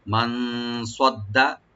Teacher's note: মান সাদ্দা, সটাকে ডিপ করে পড়ব, সিন যেন না হয়। আর ডালটাকে, ডাল যেটা ডাবল করে পড়ব, ডাল কোনো টান হবে না।